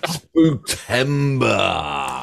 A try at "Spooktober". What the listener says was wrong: Spooktober. What did you call it? It's not Tember, Tober.